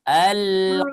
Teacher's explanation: Ko-nya jangan terlalu panjang ya. Ko-nya 2 harakat saja.